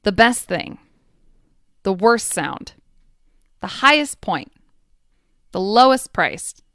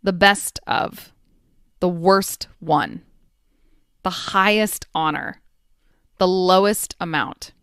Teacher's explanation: if it's two consonant sounds back to back, sorry to say, that final T sound is likely going to get erased. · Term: elision